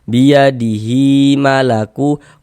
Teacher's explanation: Maka huruf yang memiliki tanda baca dhammah ini dibaca panjang. Sehingga ku dibaca panjang. Mad tabi'i panjangnya 2 harokat.